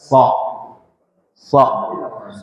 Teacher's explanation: Dia memiliki sifat istila yang memiliki sifat idbaak kita angkat punggung lidahnya ini yang menimbulkan kesannya kayak o padahal ini karena hurufnya dibaca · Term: huruf Shad